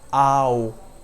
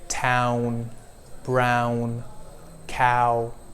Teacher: So you see how my mouth is opening twice, one after the other, like ah, o. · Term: diphthong